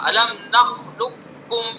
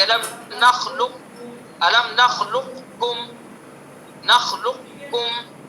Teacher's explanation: کر دیں گے، یہ ادغام تام ہو جائے گا، الم نخلقکم، بڑے قاف کی آواز نہیں آئے گی، اور ناقص کریں گے تو تھوڑی بڑے قاف کی بھی آواز آئے گی